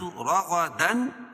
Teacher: را، را اور غین دونوں کو اوپر پڑھیں گے، کیونکہ را کے اوپر زبر ہے، قاعدہ ہے کہ را کے اوپر زبر ہو تو را کو پر پڑھیں گے، اور غین حروف مستعلیہ میں سے اس کو بھی پر پڑھیں گے